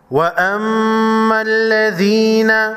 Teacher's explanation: میم مشدد پر غنہ ہوگا